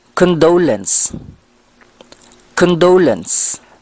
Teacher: we have to put the stress on the second syllable